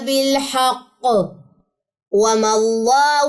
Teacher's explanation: तनवीन के बाद लाम है यहां पे हम गुना नहीं करेंगे इदगाम बिला गुना गुने के बगैर